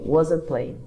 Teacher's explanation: Mas é muito comum na fala a gente tirar esse T daí